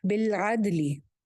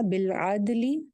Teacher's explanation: لام ہلے گا نہیں, دال کی آواز جو ہے وہ ہلے گی کیونکہ یہ قطب الجد میں سے ہے, کلکلا والے لیٹرز میں سے ہے.